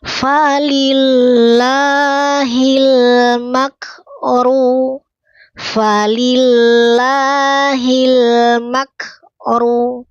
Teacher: Mak tahan dulu suaranya. Mak tertahan suara kemudian baru percikan napas.